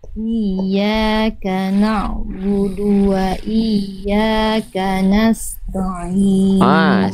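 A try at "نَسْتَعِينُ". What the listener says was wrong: Huruf ta, huruf tipis, huruf tebal Bunda. Tipis. Maka jangan nasta, ta, tapi ta. Nasta. Nasta. Nasta'in.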